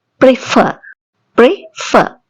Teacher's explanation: ferவில தான் ஸ்ட்ரெஸ் கொடுக்குறோம்.